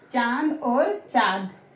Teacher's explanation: मुंह और नाक दोनों वाइब्रेट होते हैं हमारे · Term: अनुनासिक